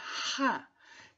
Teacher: O som é RA, que na animação é possível de visualizar que há um movimento da região posterior da língua que vai em direção ao palato mole, que é a região posterior do palato. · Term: fricativa velar desvozeada